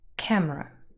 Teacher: camera has two syllables and the first one is stressed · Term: tonic stress